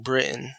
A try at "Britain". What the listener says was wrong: See, you did what they do. You didn't pronounce the T. You said he's from Britain.